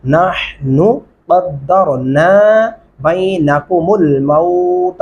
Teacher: नहनु इस नून को नहीं खींचना